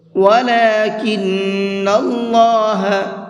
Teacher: اللہ کے لام کو منہ بھر کے پڑھیں گے